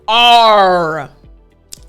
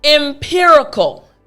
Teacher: Your tongue is kind of hovering in your mouth, not touching the roof of your mouth. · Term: R sound